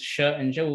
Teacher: we have five which is post-alveolar sounds as the name suggests it's sounds produced behind your alveolar ridge